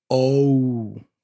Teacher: in English it's O and it closes so you have this o u sound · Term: diphthong